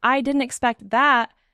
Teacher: the stress on expect helps your voice find a natural rhythm. And stress reduces pauses because your voice moves toward the important part of the sentence automatically.